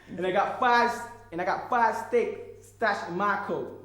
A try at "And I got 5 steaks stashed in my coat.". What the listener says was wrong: You're still stressing out. You've got to, where you won't get the laugh if you say my. If you stress my. Sorry, you won't.